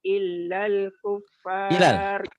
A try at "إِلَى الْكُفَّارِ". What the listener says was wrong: Ilal bukan illal, enggak ada tasdid. Fala tarji'uhunna ilal kuffar, bukan illal ya Makcik, tak ada tasdid. Fala tarji'uhunna ilal fala tarji'uhunna ilal kuffar.